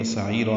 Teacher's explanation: پھر تنوین کے بعد واو آنے کی وجہ سے ادغام ہے، ادغام ناقص غنہ کریں گے. و سعیرا میں عین وسط حلق سے ادا کریں گے